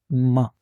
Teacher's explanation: दोनों होठों को आपस में मिलाने से हर्फ मीम की आवाज अदा होती है।